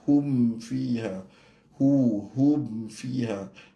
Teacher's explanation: Hum fiha, mim dengan fa jadi izhar syafawi, tapi izhar yang kuat lah.